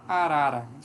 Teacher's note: é um toque da lâmina da língua nos alvéolos